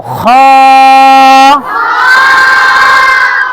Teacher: হলকের শেষ। তার মানে গলার শেষ থেকে আমরা উচ্চারিত করব খ